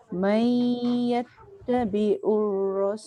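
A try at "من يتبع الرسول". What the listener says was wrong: Dia kalau tabi'ur dia jadi hamzah, dia tak tekan. Yattabi'u. Jangan tabi'u. Yattabi'u. Dengung jangan tinggal. May yattabi'ur rasul.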